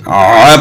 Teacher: عین کی آواز جو ہے نا اس کو اگر ہم ا پڑھیں گے تو ا جو ہے نا وہ حمزہ زبر ا ہو جاتا ہے، وہ پھر حمزہ بن جاتا ہے. عین کی آواز کو بھی گلے کے درمیان سے نکالنا ہے. جس طرح ح کی آواز گلے کے درمیان سے نکالنی ہے، اسی طرح عین کی آواز کو بھی گلے کے درمیان سے نکالنا ہے، اور اس کا صحیح مخرج یہی ہے.